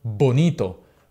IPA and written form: ˈbonito (bonito)